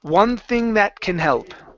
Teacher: your tongue is in the same place with the n and the th you can connect these sounds